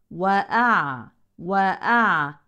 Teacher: ننتبه اولا لتوسط العين الساكنه